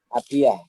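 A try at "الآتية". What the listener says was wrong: Atiyah, panjang A ya.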